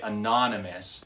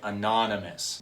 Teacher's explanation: when I say it anonymous, I'm emphasizing the syllable non